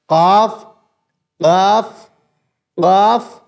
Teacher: अभी जो मैंने आपको मखर बताया वो है काफ काफ काफ काफ का मखर जबान की जड़ उसके मुकाबिल ऊपर का तालू